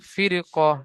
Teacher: র সাকিনের পূর্বে জের এসেছে র বারি হওয়ার কথা ছিল পরে হরুফে মুস্তালিয়া কফ আসার কারণে র কে পুর করে পড়তে হবে